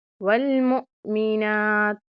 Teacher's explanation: پھر سے آپ نے جھٹکا دینا ہے حمزہ پہ، اور نون کے اوپر کھڑی زبر ہے، ایک الف کے برابر لمبا کریں گے۔